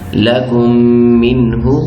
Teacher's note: آگے نون ساکن کے بعد حروف حلقی آ گیا ہے، تو ہم نے اس کو جلدی سے ادا کیا ہے، منہ نہیں کہا اور کہنا بھی نہیں ہے۔ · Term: اظہار والا نون